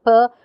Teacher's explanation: it has the features voiceless and it's bilabial it's it's a stop or an obstruent so these are its